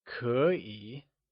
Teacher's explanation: 可以 is spoken in the second and third tone when together, keeping the two third tone rule in mind, which was that whenever there are two third tones in a row, the first third tone becomes a second tone.